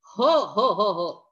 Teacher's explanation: या वर्णाचा उच्चार करताना फुफ्फुसातील हवा तोंडावाटे जोराने बाहेर फेकली जाते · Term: महाप्राण